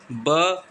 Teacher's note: ब सघोष है, औष्ठ्य है, लेकिन महाप्राण नहीं है, अल्प प्राण है